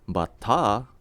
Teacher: Batta, with an elongated A sound at the end, means batter, as in a baseball batter.